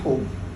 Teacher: Hub itu pertemuan antara huruf ha dan ba. Huruf ha-nya itu terbuka, ba-nya itu tertutup dari segi cara pengucapannya.